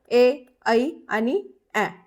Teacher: ए, ऐ आणि ऍ हे जे आहेत हे ध्वनी कंठ तालव्य मध्ये येतात